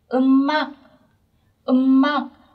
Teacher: Các bạn lưu ý phải nối âm ạ. Ở đây chúng ta có phụ âm cuối là chữ M và các bạn phải nối lên.